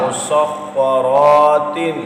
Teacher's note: را پر زبر ہے اور مستعلیہ ہے، یہاں پر آپ نے اس کو پر بھی پڑھنا ہے